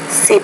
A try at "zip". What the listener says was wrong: Not pronouncing the Z with enough vibration. So lice, lies. Sip, zip.